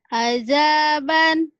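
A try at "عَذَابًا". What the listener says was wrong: Bukan ajaban. Itu mah orang Betawi. Terlalu rapuh. Zal. Azaban. Azaban.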